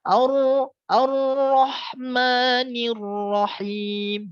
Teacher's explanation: ketika huruf ro bertasdid itu jangan sampai bergetar ya